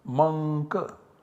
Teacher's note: Anuswarasya yai parasavarnaha applies and substitutes this anuswara by the savarna of k. The nasal savarna of k is ng, so the output generated is mank.